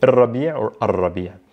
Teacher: we're not pronouncing the L and we're doubling down on the R because it's what's known as a sun letter